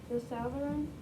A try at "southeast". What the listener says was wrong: No, not the southern. There's no R or N. It's a compound word.